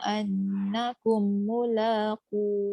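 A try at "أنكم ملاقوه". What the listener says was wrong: Akum tu dengung. Annakum mulaqu.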